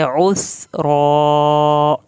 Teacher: آئین کو حلق سے پڑھنا ہے، سین پہ سیٹی کی آواز اور را کی کھڑی زبر کھینچنی ہے